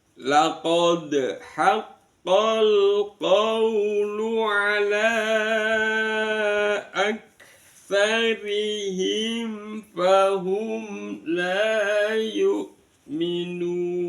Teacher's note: Diperhatikan saya baca dengan ee nada datar naik dan datar